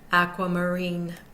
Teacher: the second syllable is unstressed the third syllable is unstressed and the final syllable takes most of the stress as the primary stress syllable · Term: primary stressed syllable